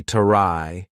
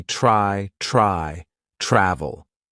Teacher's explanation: the CH sound combined with r